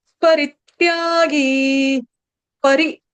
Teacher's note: उसके बाद परित्यागी, परि, री ह्रस्व है, री पर आघात